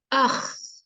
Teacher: सबसे ऊपर जो है, जो टॉप ऑफ थ्रोट है, गले का पार्ट, उसमें है ख